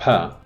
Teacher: when you have the plosive pa, the stricture happens between the two lips.